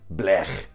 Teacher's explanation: It's the back of the throat fricative, like in blech